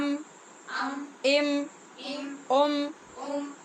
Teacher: یہ ہونٹوں سے میم ادا ہو رہا ہے